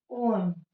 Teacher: प्लुत स्वर है यहाँ आपका तीन मात्रा के बराबर, तीन मात्रा के बराबर समय लगेगा उच्चारण में